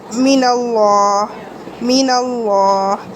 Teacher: اب دیکھیں یہاں پہ غنہ کیا من اللہ، لیکن دیکھیں نون آئی بغیر تشدید کے اور اس کو ہم نے فوراً ادا کر دیا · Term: غنہ آنی